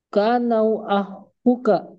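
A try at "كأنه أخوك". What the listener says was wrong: Panjang akhuka.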